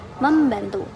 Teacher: Yang kedua ada asimilasi fonetik, yaitu perubahan bunyi yang terjadi tidak mengubah identitas fonem, melainkan hanya bentuk pengucapannya. Contoh, perubahan dari N menjadi M sebelum konsonan bilabial seperti P atau B